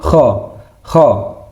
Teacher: Sama seperti huruf ha, tapi dia sedikit agak ee tenggorokan ke dalam.